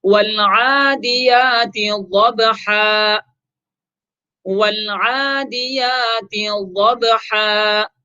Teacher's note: تو با چونکہ یہاں پر ساکن ہے لہذا قلقلہ کریں گے